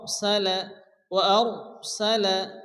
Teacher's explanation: সালা এখানে র সাকিন তার ডান দিকে কি আসছে জবর তো এখানে র কি হবে পুর করে অর্থাৎ মোটা করে উচ্চ করে পড়তে হবে